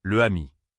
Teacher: Dire « les amis » sans prononcer le « z », le ami. Pour un natif, cela semble immédiatement étrange et marque l'accent étranger.